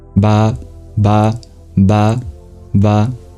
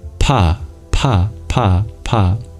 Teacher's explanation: You can turn off the voicing, so instead of ba, you get pa, pa, pa, pa.